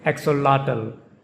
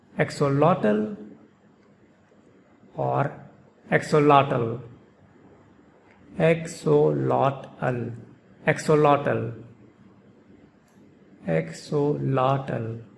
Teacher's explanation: The stress is on the third syllable in both the pronunciations. And there is a very slight difference in the pronunciation of the third syllable in both pronunciations of this word.